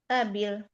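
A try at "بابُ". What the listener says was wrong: Kok babi? Kok kasroh? Kenapa kasroh? lada saja berarti dia indah. Ya, berarti di sisi bukan kepunyaan. Karena kalau kepunyaan nanti jadi ladaya. Berarti di sini dia majrur di kasroh.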